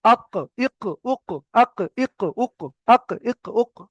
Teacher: জিভের গোড়াটা ওই সোজা উপরের সঙ্গে, উপরের তালুর সঙ্গে লাগিয়ে কফ উচ্চারণ হবে, যেমন আক, ইক, উক, আক, ইক, উক, আক, ইক, উক, একদম জিভের গোড়াটা ওই সোজা উপরের সঙ্গে লাগানো, আক, ইক, উক। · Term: দুনক্তাওয়ালা কফ